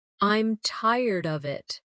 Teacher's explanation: with of sounding almost like uh These weak forms are part of the rhythm of English.